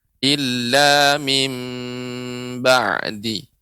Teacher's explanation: Ya, di sini catatannya Ibu yaitu mengucapkan mim ya ditutup ya bibir atas dan bibir bawah illa mim ya ditempelkan tapi tidak ditekan illa mim ba'di ya.